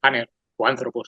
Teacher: El espíritu suave lo que indica es que no hay aspiración